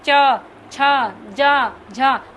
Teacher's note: तालव्य से देखिए, तालु से देखिए चिपकाइए, च छ ज झ, हम च बोलते हैं, हमारी जीभ कहाँ जा रही है, तालु में चिपक के च छ ज झ